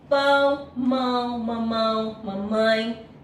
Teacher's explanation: todas essas palavras são consideradas ditongo nasal de todo por que ficam na mesma sílaba as duas vogais · tem um som mais que sai pelas fossas nasais. Não sai totalmente o som pela boca.